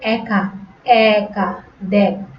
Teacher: এ ধ্বনির বিবৃত উচ্চারণ ইংরেজি ক্যাট ও ব্যাটের মতো এর মতো হয়, যেমন দেখ, একা ইত্যাদি।